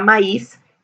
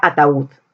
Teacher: La U suena más que la A, la I suena más que la A, la U suena más que la A. Eso produce hiato acentual.